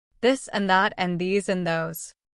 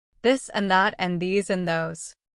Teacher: Let's practice the first th, the one with vibration.